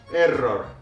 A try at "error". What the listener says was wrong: I think we have little bit too strong R.